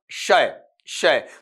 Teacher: तो यहां पर जो आपका ऊपर वाला जीभ का हिस्सा होता है, मुंह नहीं, जो जीभ का मेन बॉडी वाला हिस्सा होता है वो ऊपर के तालु को हल्का सा टच कर रहा होता है। वेलर की अपन बात करते हैं तो आपका जीभ का जो फ्रंट हिस्सा है वो क्या करता है, नीचे की साइड मतलब कोमल तालु को टच करता हुआ रहता है। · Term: पैलेटल